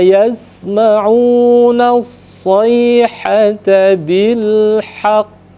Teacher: kita berhenti berlaku hukum qqalah dan olahkan memantulkannya itu ditahan dulu karena huruf qo itu ada tasdidnya maka ditahan dulu